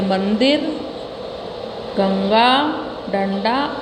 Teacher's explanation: अनुस्वार का उच्चारण करते समय हवा केवल नाक से निकलती है।